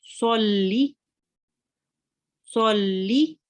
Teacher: The sad here, sod, joins on to the lam, and we press on the lam, and then we add the kasra and read the kasra. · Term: lam mushaddad